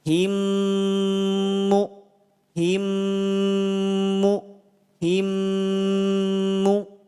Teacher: Jadi terasa ada getaran di hidung kita. Itu menandakan ada bunyi gunnah.